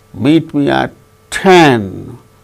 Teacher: 10 is the tonic syllable, or which gains more importance than meet.